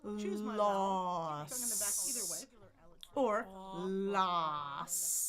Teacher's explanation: La la la la la la la la la. So I start with my tongue on the bump, choose my vowel, tongue in the back either way, ah or ah, and then my tongue comes back to the front for that S.